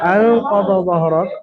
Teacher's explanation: নুন সাকিনের পরে, নুন সাকিনের পরে হরফে ইখফা 15টি অক্ষরের মধ্যে কফ এসেছে। তো নুন সাকিনের আওয়াজকে এক আলিফ পরিমাণ গুন্না সহ পড়তে হবে। এটা হলো ইজহারে ইখফায়ে হাকিকির কায়দা। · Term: ইখফা হাকিকির কায়দা